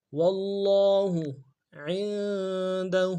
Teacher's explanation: عین کو نون کے ساتھ ملانا ہے، غنہ کریں گے ، دال کو نون سے ادا کریں گے، ہا کو الٹا